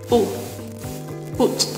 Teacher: В отличие от русского звука «у», губы не ставятся в положении трубочкой, однако все остальные органы речи остаются в этом положении. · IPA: [ʊ]